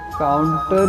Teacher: यदि हम सहज रूप में बोले तो काउंटर ही बोलते हैं, काउंटर नहीं, क्योंकि न उच्चारण करते समय जीभ दांत से लगी होती है और ण उच्चारण करते समय जीभ मूर्धा में होती है, और काउंटर बोलते समय जीभ मूर्धा से लगी होती है, दांत से नहीं।